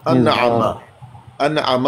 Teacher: नून साकिन के बाद है आइन, कौन सा? इज़हार।